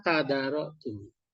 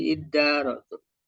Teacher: Jadi kalau ada huruf ta dengan dal bertemu, maka ta-nya itu jadi dal, menyesuaikan. Jadi si ta-nya itu diidghamkan, artinya dileburkan ke huruf dal ya, sehingga ketika ada dua dal itu kemudian disatukan ya menggunakan tasdid.